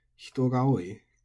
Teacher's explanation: hitogaoi is flat. There's no accent. But when it's modified, it becomes odaka.